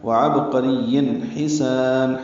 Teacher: ہا وسط حلق سے ادا کریں گے